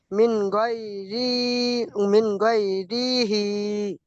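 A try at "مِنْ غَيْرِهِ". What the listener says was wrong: হুম, রি টান দেবেন না, কারণ র নিচে জের এসছে, যে কি হারাকাত। তাই মিন গয়রিহি, গয় বলবেন না, মিন গয়রিহি।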